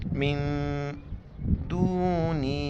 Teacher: نون ساکن ہے، اخفا کریں گے، ناک میں آواز چھپائیں گے ، من دونہ، مد ہے 4 الف کی مقدار کھینچیں گے،